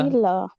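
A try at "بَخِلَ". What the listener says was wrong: বা টান হবে না, যেমন বাখিলা।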